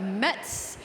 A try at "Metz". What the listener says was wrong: You don't pronounce a T. Mess. No, it's like A big mess.